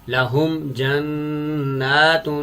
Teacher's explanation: جیسے لاہم جنات، اس مثال میں میم ساکن تو ہے لیکن میم ساکن کے بعد نہ تو با ہے اور نہ ہی میم، تو لہٰذا اس میم پر جو کہ جزم والی میم ہے، میم ساکن ہے، یہاں پر غنہ نہیں کیا جائے گا، بغیر غنہ کے پڑھا جائے گا